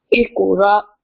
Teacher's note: एक कॉफ को मोटा भी करना है और कलकला भी करना है.